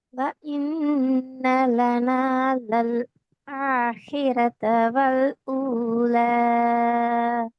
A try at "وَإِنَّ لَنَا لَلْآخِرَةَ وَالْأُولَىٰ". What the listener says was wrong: இல்ல, எத்தனை செகண்ட் நீட்டணும் கடைசியா? ஒரு செகண்ட் தானே? அதுதானே பிரச்சனை ஆகி. அதுதானே பிரச்சனை. ஒரு செகண்ட் ஒரு செகண்ட் நிக்கணும்.